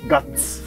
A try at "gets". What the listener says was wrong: ゲ ッ ツ 、 そ れ ゲ ッ ツ の 言 い 方 で す 。 ガ ッ ツ じ ゃ な い